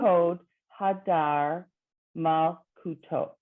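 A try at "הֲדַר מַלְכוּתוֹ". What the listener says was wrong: Exactly. And I give you all the credit in the world for starting over and getting it right.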